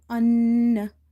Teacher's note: So you have to do ghunna in the noon sound, an, by holding it